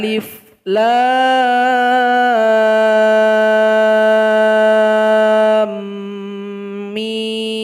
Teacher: ada kaitan idgham mimi makanya harus didengungkan dua harokat